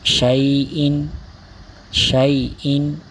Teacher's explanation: حرف لین بغیر کھینچے بغیر جھٹکا دیے نرمی سے معروف پڑھیں گے